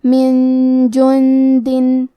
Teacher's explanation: کلمت من کے آخری میں نون ساکن ہے پھر حرف الجیم ہے کلمت جندن. جیم حروف الاخفاء میں سے ہے تو ہم یہ حکم کو غنہ کے ساتھ ادا کریں گے